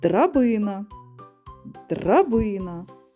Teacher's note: звук д знаходиться на початку слова і він твердий